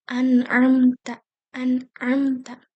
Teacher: Tetapi di dalam hukum non mati ini memang harus dibaca jelas tanpa guna, tanpa didengungkan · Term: izhar